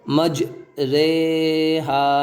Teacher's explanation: مجہول یعنی کہ اردو کی را کی طرح اس را کو ہم پڑھیں گے، ری ہے لیکن یہاں پہ رے ہم پڑھیں گے، مجریہا، اس طرح پڑھنے کو امالہ کہا جاتا ہے۔